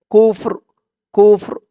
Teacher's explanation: চিহ্নতে থামার কারণে কাফ দিয়ে ফা কেও ধরবে র কেও ধরবে র আওয়াজটা লাস্টে একটু ভাসবে